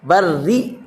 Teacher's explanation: یہاں را مشدد کے نیچے زیر ہے تو را باریک ہوگی